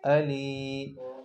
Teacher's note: یا مدہ ہے، 2 سیکنڈ تک لمبا کریں گے